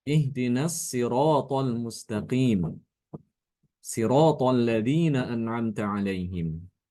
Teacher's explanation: Di ayat yang ke-6 dan ke-7, khususnya pada lafaz as-sirat dan sirat, ini Imam Kumbul ini membaca sod itu dibaca dengan sin. Ya, jadi sodnya itu diganti dengan huruf sin.